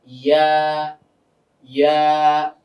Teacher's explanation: তো ইয়ার মাখরাজটা কি ছিল? জিহ্বার মধ্যখান তার বরাবর উপরে তালুর সঙ্গে লাগিয়ে ইয়া